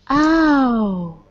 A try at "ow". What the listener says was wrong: Ow. A little bigger and a little rounder. Ow.